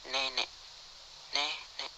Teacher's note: depan sedang bawah tak bundar semi terbuka